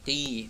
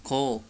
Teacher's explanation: Huruf qaf tidak boleh disertai dengan keluarnya nafas. Qi, bukan ko.